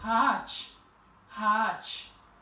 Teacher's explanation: Vous voyez qu'on n'a pas prononcé la lettre Yumuşak G, le G faible.